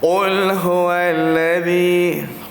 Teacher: Bila kita sebut huruf ha ni, biasanya suara kita akan menjadi lebih rendah bunyinya. Kerana kita menghembuskan angin yang keluar. Dia akan bunyi agak perlahan daripada suara-suara yang bunyinya jahar. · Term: hamas